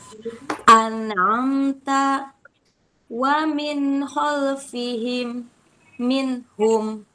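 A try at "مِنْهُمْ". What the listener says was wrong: Jangan disentak. Minhum. Minhum. Ya, mengalir tetap ya. Minhum. Kalau dia disibda minhum. Nah, itu berarti disibda ya, Bun. Terhenti ya suaranya. Itu tidak terhenti suaranya.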